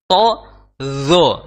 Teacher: di ujung lidah bertemu dengan ujung gigi seri atas